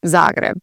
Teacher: Here in Croatia, a lot of the emphasis is on the first part of the word.